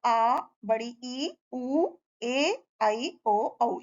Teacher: जिन स्वरों के बोलने में हस्व स्वरों से लगभग दो गुना समय लगता है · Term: दीर्घ स्वर